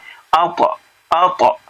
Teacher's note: طا میں قلقلہ ہے، حروف قلقلہ پانچ ہے نا، قاف طا با جیم دال